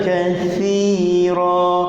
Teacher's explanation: Hujung lidah sentuh hujung gigi atas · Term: huruf sa